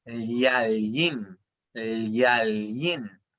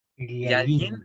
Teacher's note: Y luego tenemos, por último, la doble L, que tampoco es difícil de sacar, pero tienen que imaginarse que hubiera como una Y chiquitita entre las dos L, o también entender de que en el mapudungun, a diferencia del castellano, se pronuncian efectivamente las dos L.